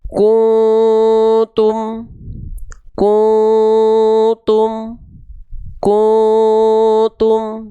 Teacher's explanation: Karena dia si taknya ya, maaf, si taknya ini masih terbawa oleh bunyi dhammah. Ketika samar dengungnya itu, huruf taknya itu ketika siap-siap kita lafalkan ketika samar dengung ikhfa, dia masih ke bawah dhammah monyong.